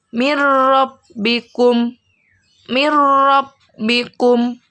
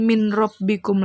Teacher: Jadi bukan min rabbikum lagi, tapi mirrabbikum. Nah, nun sukunnya sudah tidak terbaca. Ingat, tidak terbaca karena sudah lebur atau sudah masuk ke huruf ro. Dan tidak boleh dibaca dengung karena idgham bila gunnah dengan tanpa mendengung.